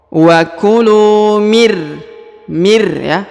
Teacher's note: huruf nun sukun langsung menghilang apabila bertemu dengan huruf ro yang berharokat tasdid